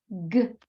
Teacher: She schwas everything. So everything is ga, pa.